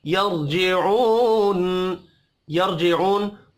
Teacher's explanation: रा साकिन से पिछले हर्फ के ऊपर जबर है, रा को पुर पढ़ेंगे। जीऊ वाव मद्दा है, एक अलिफ के बराबर खींच कर पढ़ेंगे, वफ की सूरत में नून साकिन पढ़ा जाएगा।